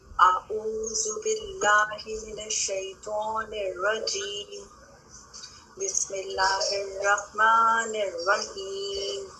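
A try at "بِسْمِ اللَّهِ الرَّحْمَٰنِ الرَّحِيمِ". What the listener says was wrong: بسم اللہ یہاں پہ بھی سانس جاری رہ رہا ہے. الرحمن الرحیم.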